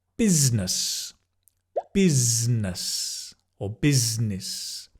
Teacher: It's z and n together, not busi-ness